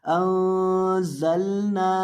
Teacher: अब इस लफ्ज़ के अंदर भी आपने यहाँ नून के ऊपर गुन्ना करके पढ़ना है, अंज़लना, और जा के अंदर सीटी पैदा करनी है और यहाँ भी आखिर पे ये जो नून है इसको लंबा करके पढ़ेंगे, अंज़लना।